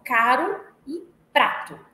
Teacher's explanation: expressão R fraco e r forte o que é R fraco é o r que ocorre entre vogais também chamado de tep violar em palavras como caro e prato ele é considerado fraco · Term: tepe alveolar